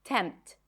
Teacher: You don't really hear the P here.